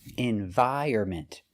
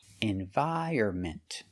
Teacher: The stress is on the second and fourth syllable.